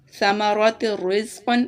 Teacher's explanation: تا کی آواز کو را کے ساتھ ملائیں گے لیکن غنہ نہیں کریں گے ، جیسا کہ اسے ایسے پڑھیں گے، ثمرات الرزق، لمبا نہیں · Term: ادغام